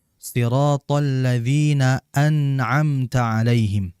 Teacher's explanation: Nun dia keluar dari ujung lidah disertai dengan ghunah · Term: izhar